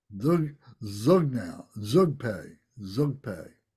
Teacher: The D is the first letter of the word, this Zog, and you got the Z sound and the O, G, Zog, Zog. So it's not just the Zog like a Z sound, it's got a D in front of that.